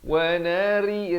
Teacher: ri jadi nipis di sini macam tersenyum gitu ya.